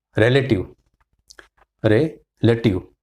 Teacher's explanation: It is relative because re has got stress. So of course the next one will come schwa.